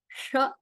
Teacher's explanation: ಆ ಶಕಾರದಲ್ಲೂ ಮೂರ್ಧನ್ಯ ಶ ಬೇರೆ, ತಾಲವ್ಯ ಶ ಬೇರೆ, ಶ ಅಂತ ಹೇಳೋದ್ ಬೇರೆ, ಶ ಅಂತ ಹೇಳೋದ್ ಬೇರೆ. ನಾಲ್ಗೇನ್ ಸ್ವಲ್ಪ ಮೇಲ್ ಮಡ್ಸ್ಕೊಂಡು ಶ ಅಂತ ಹೇಳ್ತೀವಲ್ಲ, ಷಕಾರ ಅದನ್ನ ಷಣ್ಮುಖ ಶ ಅಂತಲೂ ಹೇಳ್ತಾರೆ